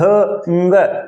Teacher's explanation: देखिए अंग का उच्चारण करते हैं तो दो स्थान से उच्चारित होता है, कंठ से भी होता है और उसका कुछ हिस्सा वायु का है, वो नाक द्वार से भी बाहर निकलता है